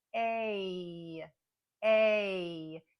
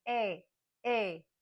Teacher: a combination of sounds It's a combination of a e and there's even a little Y sound at the end we call this a shadow y but we often will w round off the sound with a